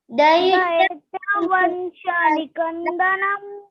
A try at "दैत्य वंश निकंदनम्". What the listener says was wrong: नम बोलना है, न पे अनुस्वार है इसलिए। दैत्य वंश निकंदनम